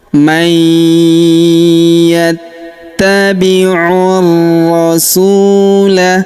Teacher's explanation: Huruf su kita panjangkan 2 harokat karena wawu sukun di depannya · yattabiur rasula. Kemudian huruf u langsung sambung ke huruf ro yang berharakat tasydid. Langsung masuk ke sini kita tahan dan tekan pada huruf rnya. · Langsung masuk ke sini kita tahan dan tekan pada huruf rnya. Alif lamnya tidak dibaca. Ini alif lam syamsiyah ya.